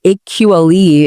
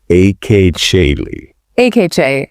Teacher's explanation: notice how that T sound sort of morphs into a soft sh, like in chicken, and the U sound practically disappears.